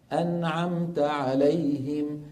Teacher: الميم بتاخذ حظها من الزمن كحرف بين الرخو والشديد · الميم تأخذ حظها من الزمن كحرف بين الرخو والشديد، كما تقدم معنا في الدورة الماضية أن الحروف لين عمر السواكن لها حظ من الزمن أقل من الحروف الرخوة وأطول من الحروف الشديدة.